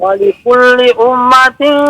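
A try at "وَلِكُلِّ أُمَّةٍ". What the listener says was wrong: Tasdidnya jangan lupa mim bertasdid.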